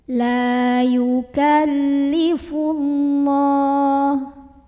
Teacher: Karena alif lamnya bertemu dengan huruf syamsiyah yaitu lam, maka alif lam ini tidak perlu kita baca. Dari fu langsung kita masukkan ke lam berikutnya. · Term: alif lam syamsiyah